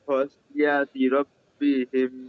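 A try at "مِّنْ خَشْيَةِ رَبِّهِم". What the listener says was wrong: খাসিয়া ছেড়ে দিলে হবে না, খাশিয়াতি এইভাবে, হ্যাঁ, ধরে রেখি। মিন খাশিয়াতি রব্বিহিম এভাবে বললে হবে না, ধরি ধরি বলতে হবে। মিন খাশিয়াতি রব্বিহিম, এভাবে।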